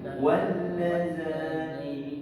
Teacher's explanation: Tapi tuan-tuan jangan dengung panjang sangat, dua harakat tak boleh. Satu je. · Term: idgham